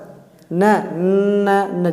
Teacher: इनको बोलने में आपके नाक से भी साउंड निकलती है। आपके नाक का ही प्रयोग हो रहा है। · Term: नासिक्य वर्ण